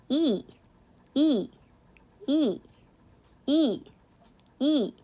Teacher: 남은 거 이 하고 발음하면 혀 끝 자체는 아주 위로 올라가 있지 않지만 혀의 전반적인 부분은 이 하면서 입천장 가까이랑 굉장히 많이 붙어 있어요. 그래서 이 이도 고모음에 해당된다라고 보시면 됩니다.